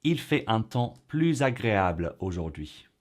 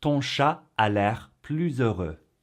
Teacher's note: if the adjective or adverb starts with a vowel or silent h, then we make the liaison and so it becomes pluz